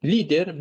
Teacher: Lider birinci hecaya düşür.